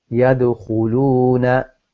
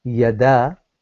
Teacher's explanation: So you have seen how I have put a vibration there, echo sound there, which is yad. So I'm not changing it to fatha. I'm not saying yada. I'm saying yad.